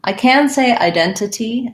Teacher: So it sounds like the diphthong I, just like when I say I know or I have, and then a lax I, and then D. So identity, second syllable stress.